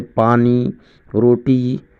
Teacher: یا کی 2 قسمیں ہیں، یا معروف اور یا مجہول۔ تو یا معروف اس میں یا کا تلفظ کھینچ کر کیا جاتا ہے